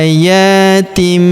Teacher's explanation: Kemudian tanwin in huruf tin bertemu dengan huruf ba maka tanwin innya melebur masuk ke huruf ba. Kita baca dengung dan kita tahan dengungnya dua sampai 3 harakat. Tanwinnya tanwin in berubah menjadi mim.